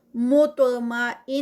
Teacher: تا جو ہے وہ ہیوی ہے اور تا کا قلقلہ بھی ہے